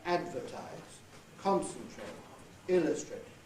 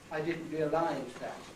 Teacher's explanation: stress on the last syllable but 2